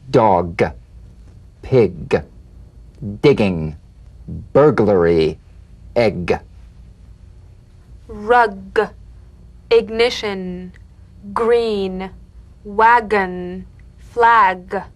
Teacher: you'll feel a crisp tap and a voiced pulsation of the back of the tongue g g- g- g- g- g g g- now tap the